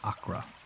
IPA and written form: əˈkrɑː (Accra)